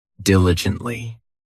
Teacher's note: This adverb has 4 syllables, and the stress is on that first syllable.